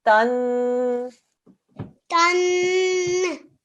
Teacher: Ta with a fathatain, a 2-second nasal sound